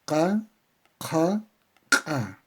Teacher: fonador la boca la lengua aparato fonador una flecha que indica un punto de articulación que es la zona post velar post velar donde se producen estos sonidos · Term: zona posvelar